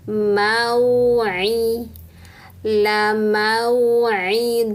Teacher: harfun linnya di fathah ketemu wau sukun maka bibir mencucuk ke depan